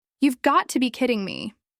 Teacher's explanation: she noticed the rhythm, the stress on kidding